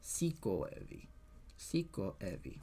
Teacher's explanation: So the stress goes here. And then there's still like a little slight stress on evi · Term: secondary stress